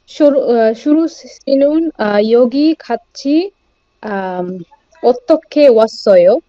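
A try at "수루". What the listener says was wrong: এখানে একটু ভুল আছে, শুরু হবে না, আমাদের সিয়তের উচ্চারণ কি হবে? এস, ইংরেজি এস এর মতো, বাংলা দন্তাস্বর মতো হবে না। ইংরেজি এস যদি ফলো করেন তাহলে এক্সাক্ট উচ্চারণ হবে, সেটা হবে সুরু, সুরু।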